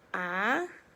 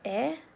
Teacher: There's two different shapes. The A, you're opening up your mouth a little bit more to make that ah sound. Whereas the E sound, you kind of like closing your mouth a little bit more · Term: short A